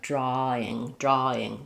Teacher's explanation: where it's most likely to have that R creep in is in a word like drawing